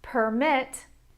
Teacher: Let's look at permit - permit is a noun, permit is a verb. My intonation goes up when I say the verb permit